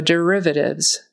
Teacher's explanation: Derivatives, the accent is on the second syllable.